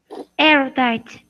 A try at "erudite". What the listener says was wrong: Good. Did you listen to it?